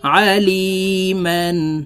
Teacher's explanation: আইন হরফকে হালকের মধ্যখান থেকে চাপ দিয়ে উচ্চারণ করে পড়তে হবে